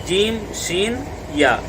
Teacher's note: ज़ुबान का बीच और ऊपर का तालु जब आपस में टकराएंगे, मिलेंगे, तो जीम, जीम और शीन और या, ये तीनों हरूफ निकलेंगे। जीम, शीन यानी बड़ी शीन और या, ये तीनों का मखरज एक ही है।